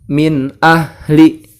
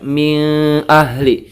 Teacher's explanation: suaranya nun sukun atau tanwin itu dibaca jelas yang tidak dibaca dengung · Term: izhar